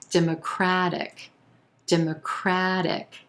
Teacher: our stress shifts to the third syllable. Democratic, democratic, and the A as in black vowel sound.